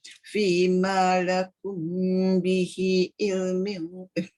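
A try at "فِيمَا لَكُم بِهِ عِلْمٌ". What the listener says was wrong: Ain tu tak masuk. Tu. Bihi ilm. Dia kalau ilm dia kat luar je tu. Tekan sikit ke dalam. Bihi ilm.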